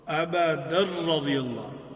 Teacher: ادغام ہے ادغام بلا غنہ، کہ جہاں پہ تنوین کے بعد را آ گیا ہے تو اس میں ادغام ہوگا، لیکن ادغام بلا غنہ ہوگا